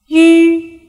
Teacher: While pronouncing oo, the opening of the mouth is the minimum. The lips are rounded to the maximum extent and the tongue remains high and towards the back.